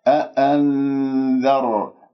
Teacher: لاحظوا كيف أنا ذهبت بأن اللسان إلى مخرج الذال، إلى حيز مخرج الذال، أتهيأ لنطق حرف الذال لأنه نون ساكنة بعدها ذال، إذن إخفاء.